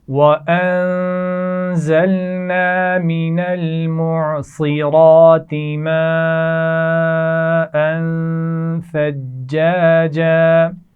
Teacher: ثجاجا جیم پر شد ہے، سختی سے ادا کیجئے۔